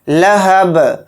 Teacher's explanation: آیت کرنے کی حالت میں با کو ساکن کر دیں گے اور با کے اندر قلقلہ بھی کریں گے